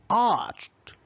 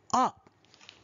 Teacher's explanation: the mouth without friction for instance when speaking the word art air escapes freely and continuously without any friction while pronouncing the first sound ah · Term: vowel sound